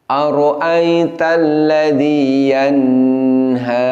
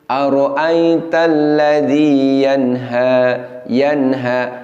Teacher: bunyi dengung pada nunnya melebihi satu harokat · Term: dengungnya terlalu lama